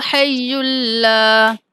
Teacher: یا مشدد ہے، لام بھی مشدد ہے، ہا کو یا کے ساتھ ملاتے ہوئے لام کے ساتھ ملائیں گے۔